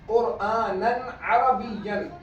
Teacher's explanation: तनवीन के बाद हलक से निकलने वाला ऐन आया तो यहाँ पर भी गुन्ना नहीं हुआ